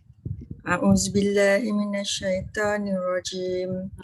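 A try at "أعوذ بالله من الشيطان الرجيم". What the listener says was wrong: Pertama sekali zal, lepas tu ta. A'udzu, jangan zu. Kalau zu dia jadi zai kan. A'udzu billahi minasyaitan. Tebal.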